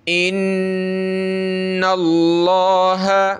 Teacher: نون پہ تشدید غنہ کریں گے